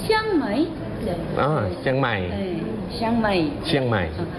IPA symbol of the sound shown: tɕʰ